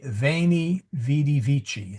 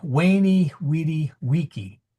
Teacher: A V sound in ecclesiastical Latin and a W sound in classical.